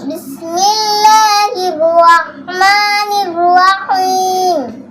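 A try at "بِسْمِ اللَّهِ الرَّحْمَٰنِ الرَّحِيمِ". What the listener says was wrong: সুন্দর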